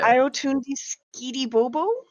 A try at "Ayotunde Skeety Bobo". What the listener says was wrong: You gotta elongate the O's though. Like turn that single syllable into like a 12 syllable.